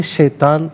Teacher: त को पुर करके पढ़ते हैं शैतान त को बारीक नहीं पढ़ते